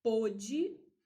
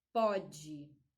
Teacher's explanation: pôde, eu tenho o O fechado e o pode, eu tenho o O aberto